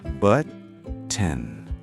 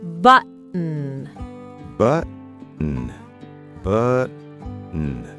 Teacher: My tongue touches the top of my mouth. Now be a lazy American. Don't use your tongue, use your throat. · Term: throat stop